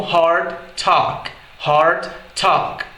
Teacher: esse A é mais fechado quando ele está na presença do T.